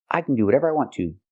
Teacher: Here we say to because there's no verb. It's at the end of the sentence. So, it's stressed.